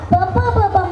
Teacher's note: ತುಟಿಗಳ ಸಹಾಯದಿಂದ ಉಚ್ಚರಿಸಲ್ಪಡುವಂತಹ ಪ ಬಂ ಅಕ್ಷರಗಳನ್ನ ನಾವು ಓಷ್ಟಾಕ್ಷರಗಳು ಅಂತ ಕರೀತೀವಿ